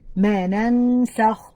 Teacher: Well, that's because there's إخفاء حقيقي here. The noon sakina plus the letter sin, that's إخفاء حقيقي